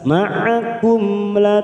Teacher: mim sukun Idhar syafawi kita baca jelas